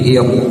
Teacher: Lihat ra sukun karena ini hamzahnya hamzah wasal, ketika ra diawali hamzah wasal bagaimanapun kondisinya harus dibaca tebal ya. Bukan ir tapi ir ya, harus ditebalkan.